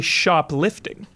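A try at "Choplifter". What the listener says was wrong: Shoplifter. shop, like helicopter. Chop, like CH.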